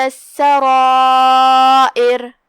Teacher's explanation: را کا حکم ہے تفخیم کیونکہ اس پہ زبر ہے، جو کہ اس کے بعد مد الف ہے تو ہم را کو اور مد الف کو دونوں کو تفخیم سے ادا کریں گے۔ یہاں مد واجب متصل ہے، ہم اپنی آواز 4 مد کے برابر لمبی کریں گے۔ آخری میں ہم را پہ روکیں گے تو اس کا حکم ہوگا ترقیق، ہم را کو ہلکی آواز میں پڑھیں گے، لیکن اگر یہ آیت کو اگلی والے آیت کے ساتھ پڑھیں گے تو اس کا حکم ہے تفخیم۔